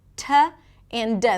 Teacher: Another challenge is the T and the D, the pronunciation of those two sounds in American English. The T and the D are produced with the tip of the tongue that touches right behind the teeth. T and D. The T is usually aspirated.